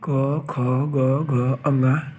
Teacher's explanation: गले में सबसे नीचे से बोले जाते हैं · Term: कंठ